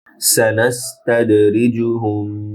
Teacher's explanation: সানাস্তাদ দারে কলকলা হবে, রিজু জিম শক্ত হবে, টান নেই, হুম ছোট হা মিমে গুন্না হবে।